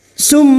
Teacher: masuk pada huruf mim dan mendengung selama tiga harakat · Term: idgham bi gunnah